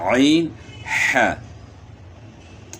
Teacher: وسط حلق یعنی گلے کے درمیان یہاں سے عین اور ح ہے، عین ح۔ اچھا ایک بات اس میں اور آپ نے جو ہے نا ذہن میں رکھنی ہے کہ گلے کو گھونٹنا نہیں ہے۔